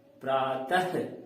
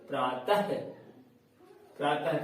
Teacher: त के बाद ह का उच्चारण हो रहा है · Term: विसर्ग